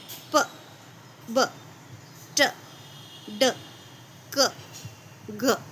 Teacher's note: पूरी तरह मुंह को बंद किया जाता है, एयर को पास नहीं किया जाता, प्रेशर बनाया जाता है मुंह के अंदर और फिर एयर को रिलीज करते हैं एकदम से।